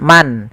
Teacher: Izhar itu suara nunnya jelas, suara n-nya jelas.